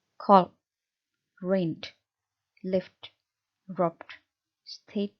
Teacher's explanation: pita suara Anda itu bergetar. Nah, bunyi-bunyi yang seperti itu disebut sebagai bunyi voiced.